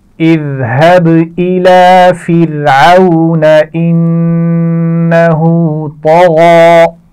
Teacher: اور طغا میں طا اور غین دونوں موٹے حروف ہیں, موٹے پڑھے جائیں گے